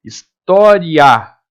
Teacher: O A sai mais forte que o I.